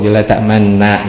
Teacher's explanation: La ta'man na itu hukumnya di idgham, ditasdid, jadi sama gitu.